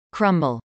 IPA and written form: krˈʌmbəl (crumble)